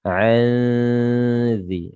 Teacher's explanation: Ditahan 2 harakat, nun sukun bertemu dengan zal. Ini namanya ikhfa ya. Ikhfa itu artinya samar-samar. Nunnya disamar-samarkan.